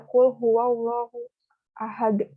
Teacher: Lam jalalah ini ada tasdid dan ada fathah di atasnya, makanya dibacanya harus tebal.